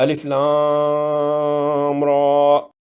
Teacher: اور آگے میم، یا مدہ اور ساکن میم ہے، مد لازم حرفی مخفف ہوگی، اور آخری را پر کھڑی زبر ہے، الف مدہ کے قائم مقام ہے، 2 حرکات لمبا ہوگا۔ الف لام را۔